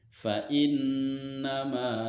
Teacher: Karena huruf mim berharokat fathah, berharokat fathah, dan di depannya ada alif sukun, dan setelahnya tidak bertemu dengan hamzah, sukun, waqaf, dan tasdid. Maka cara membacanya yaitu dipanjangkan mimnya 2 harokat. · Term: mad asli